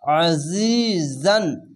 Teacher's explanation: আজিজান, এখানে আজিজান জেরের পাশে ইয়াসাকিন এক আলিফ টেনে পড়বেন, আইনটিকে মোটা করে গলা চিপে পড়বেন একটু, আর এটি ঝিনঝিনা, এই ঝিনঝিন করে আওয়াজ করছে, এরকমই ঝিনঝিন করে আওয়াজ হয়ে এই যা উচ্চারণটি হবে, আজিজান।